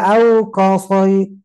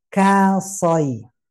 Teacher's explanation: Karena mau nyebut so tebal, maka kaf yang tipis jadi ikut tebal. Ketebalannya bisa jadi tidak ngangkat pangkal lidahnya, tapi bibir yang dimonyongkan.